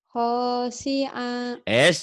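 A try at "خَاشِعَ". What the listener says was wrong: Nggak ada yang panjang. Pendek semua. Khosya, khosya gitu.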